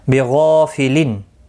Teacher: وما اللہ، اللہ کا لام زبر کی وجہ سے پر پڑھا جائے گا، اس کے اوپر کھڑی زبر بھی ہے، ایک الف کی مقدار کے برابر کھینچ کر پڑھیں گے، ہو کو کھینچنا نہیں۔ بغافلن، غائن مستعلیہ ہے، پر پڑھا جائے گا